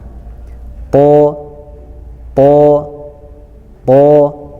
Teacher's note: Sewaktu menyebutkan huruf to, maka mulut kita akan terasa sempit karena huruf so, to itu adalah huruf isti'la atau huruf yang dibaca tebal.